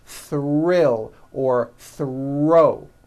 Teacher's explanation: When producing these blends, I want you to be aware that the R is the strongest sound of the blend and is louder than the TH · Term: THR blends